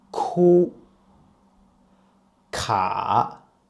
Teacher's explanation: K is an aspirative version of G.